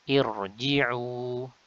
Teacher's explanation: Hamzah wasal, gugur wasal, dan kalau mulai dari sini dibaca dengan i. Nah, di sini kasrahnya adalah kasrah 'aridah, maka dari itu ra-nya dibaca tebal